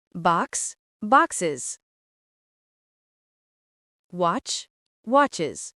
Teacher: Si un nom se termine par S, X, Z, CH, SH, on ajoute s. Le es du pluriel se prononce is.